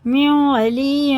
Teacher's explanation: دونوں میں ادغام ہے، نون ساکن کے بعد واو پہ شد ہے